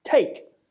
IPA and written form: teɪk (take)